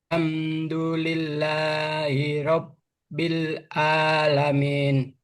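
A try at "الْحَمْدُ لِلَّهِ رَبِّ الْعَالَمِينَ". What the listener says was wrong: Ainnya coba ditarik lagi ya. Ainnya kedengarannya Hamzah.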